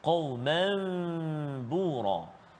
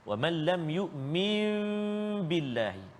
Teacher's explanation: menukar sebutan nun sakinah ataupun tanwin kepada sebutan bunyi mim. Sebutan mim berserta dengan dengung. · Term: iqlab